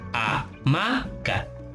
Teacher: la sílaba más fuerte es la ma, porque es amaca. Este sílaba tiene acento prosódico porque es la sílaba más fuerte, donde recae más el sonido, por eso es acento prosódico.